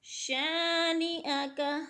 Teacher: شا پہ الف مدہ ہے، الف مدہ کو ایک الف کے برابر کھینچ کر پڑھنا ہے